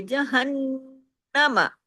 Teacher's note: اور نون اور میم دو حروف ایسے ہیں کہ یہ تو ناک سے آواز گزر کے آتی ہے تو یہ ادا ہوتے ہیں، ورنہ یہ ادا نہیں ہوتے۔ تو جب یہ ڈبل ہو جاتے ہیں تو پھر آواز جو ہے ناک میں چھپنے والی وہ بھی ڈبل ہو جاتی ہے، تو اس وجہ سے بڑا غنہ ہو جاتا ہے۔